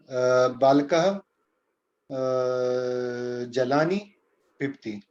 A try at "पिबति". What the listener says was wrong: Pibati, not pibti, pibati. Pibati.